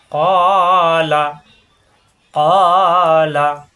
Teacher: কা হবে না কিন্তু, এখানে কা, এখানে ক, জিব্বার গোড়া থেকে